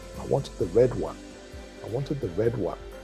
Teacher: So when you say, I wanted the red one, I guess in a normal conversational way, you would probably stress the wanted and the red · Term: sentence stress